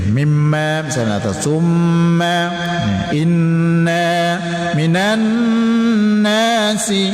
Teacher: semua yang bertasydid nun, bertasydid mim berdengung atau wajibul gunnah